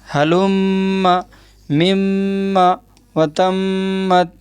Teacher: میم کے اوپر تشدید ہے اس لیے میم میں غنہ ہوگا. ناک میں آواز لے جانے کو غنہ کہتے ہیں.